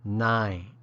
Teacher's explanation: sounds just like the number 9 with a barely discernible final N sound, nain. The second sounds like the word tap, but with the P removed and a quick stop tone ending, that.